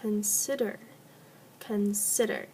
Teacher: there are three syllables the one that has the emphasis is the middle middle group of letters so please underline the SI in consider